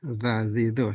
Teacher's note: makhrajnya ujung lidah ini bertemu dengan ujung gigi atas.